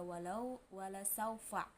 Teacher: Hukum tajwid mat lain karena waw sukun jatuh setelah lam fathah, cara bacanya dipanjangkan 2 harokat